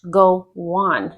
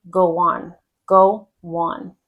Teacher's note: Now that O hops, doubles itself and goes again, kind of turns into a W with the on.